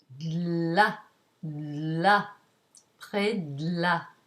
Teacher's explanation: to allow passage of air on either side of the tongue because the l is a lateral consonant the air passes on either side and there's the blockage in the middle